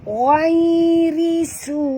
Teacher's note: Ra sini baris bawah kena baca tipis, ra terkik.